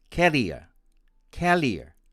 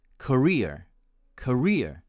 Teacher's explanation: with the stress on the first syllable and the consonant of r becoming l